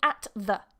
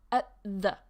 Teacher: So I'm not saying at the, but at the. You can see I'm pronouncing like the t in between my teeth, yeah? Almost a slight glottal stop as well, but I'm not going to talk about that today.